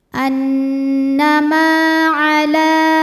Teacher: la hukumnya adalah mad tabi'i muqaddar, sebab lam berharokat fathah berdiri, maka lam panjang 2 harokat